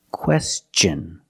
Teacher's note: when tion is after an s then it's pronounced differently it's pronounced with the CH sound the hard CH sound